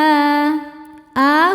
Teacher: Karena ada hamzah yang dipanjangkan. Alif jika berharakat pada dasarnya adalah hamzah juga. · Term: mad badal